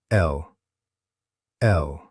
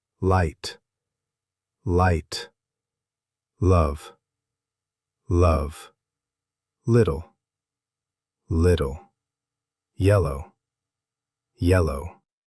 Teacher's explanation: For L, your tongue does the opposite. The tip of your tongue goes up and it touches. It touches right behind your top teeth. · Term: L sound